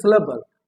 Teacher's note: l again forms the nucleus of the syllable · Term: syllabic consonant